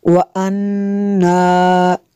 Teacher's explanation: وَأَنَّا نون مشدد ہے، یہاں پہ غنہ کرنا ہے۔